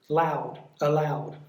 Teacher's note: for allowed it's on the second syllable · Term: stress